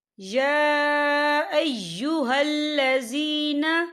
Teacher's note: یہ دیکھیں یا کے پر کھڑی حرکات ہے، اور اس پر چھوٹی سی مد بھی ہے، تو ہم اسے 4 حرکت کے برابر کھینچ کے پڑھیں گے۔